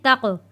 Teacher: پھر اس کے بعد تا جڑے گا جزم والے قاف کے ساتھ، تق۔ قاف حروف کلکلہ ہے، قاف کی آواز واپس پلٹ کر آئے گی